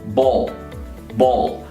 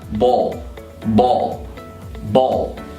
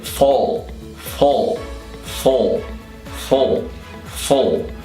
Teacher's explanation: Agora, quando ele está no final de palavras, é onde a gente tem mais dificuldade, porque a gente fala, por exemplo, ball, para bola, você vai falar ball, você tem que falar ball, ball. A língua dobra, vai para o fundo e fica mais no centro da boca dobrada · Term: dark L